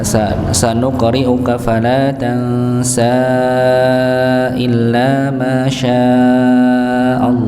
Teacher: Maka otomatis sin pada ayat yang ke-6 pada kata fala tansa maka dipanjangkan. Dipanjangkan 4 atau 5 harakat, dan dianjurkan untuk berhenti pada kata illa ma syaa Allah.